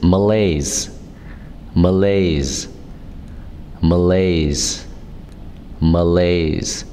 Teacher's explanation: It's two syllables and the stress is on the second syllable. So be strong on the M, ma, ma.